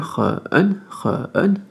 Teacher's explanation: Troisième ton, on double la voyelle au milieu, Run, tout simplement.